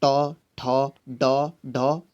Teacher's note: अगर ट वर्ग की बात करें तो ट वर्ग में कौन कौन से आते हैं? तो ट, ठ, ड, ढ, अण आ जाते हैं। ये कहाँ से बोले जाते हैं? तो इनका जो उच्चारण स्थान है वो हो जाता है मूर्धा से, यानी कि ये मूर्धन्य वर्ण है।